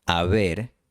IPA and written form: a'βeɾ (aver)